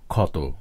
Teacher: এই যুক্ত ধ্বনি দুটির পদে অবস্থান ভেদে উচ্চারিত ধ্বনিরূপ ভিন্ন ভিন্ন হয়ে থাকে। যেমন শব্দের শুরুতে ক্ষীয় উচ্চারিত হয় খ এর মতো